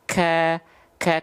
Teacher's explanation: langit-langit yang keras maka mengakibatkan ada percikan nafas sedikit ka ka karena ada bagian pangkal lidah yang nempel ke langit-langit yang keras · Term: Kaf